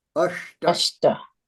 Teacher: It's back of the palate sound, not ash. It's not ashta.